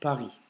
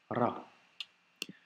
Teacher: Donc le Ra en arabe, même si ici en phonétique je l'ai écrit Ra, ne se prononce pas comme la lettre R en français qu'on peut avoir dans le mot Paris. Ça sera un R roulé légèrement avec le bout de la langue, donc ça donne le son Ra.